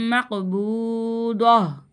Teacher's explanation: قاف کی آواز پلٹ کر آئے گی